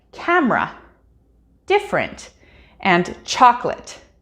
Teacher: and chocolate english speakers know what these specific words are because the schwa sound has grown so compressed in these words that even though you can hear it if someone is speaking · in some cases we even drop the entire vowel sound in pronunciation altogether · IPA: ə